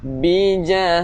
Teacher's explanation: Ta marbutah berhenti bunyi ha